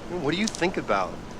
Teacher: Okay, and then we've definitely got think about. And I noticed that the T is not released.